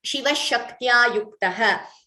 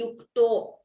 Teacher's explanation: So then if you don't pause and chant it as Shiva Shaktya Yukto Yadi Bhavati, there if you don't pause, then it would be Yukto. Because we are pausing, we are chanting the Visarga completely as Yuktaha.